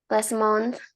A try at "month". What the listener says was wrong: Last month. Bacanya A ya daripada bukan O dibaca A.